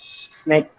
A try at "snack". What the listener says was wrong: So we said snack. That A is towards, it's not snake. Snack. Towards E. A going towards E. So it is snack.